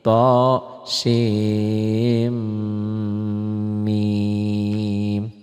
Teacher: sin n-nya ketemu mim jadi idgam